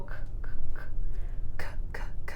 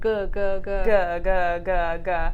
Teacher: you definitely feel that vibration on the g, but not so much on the k. So the thing about these letters, these pairs, is they're produced in the same place in your mouth, g and k, but the difference is with the vocal cords.